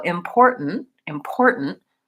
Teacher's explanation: releases right in to the N import mm and so then my n is what's called a syllabic n and that means that it has its own sound so important important the stress is on this middle syllable and